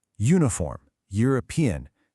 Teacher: That y sound at the beginning is a consonant sound. And that's exactly why we say a uniform and not an uniform.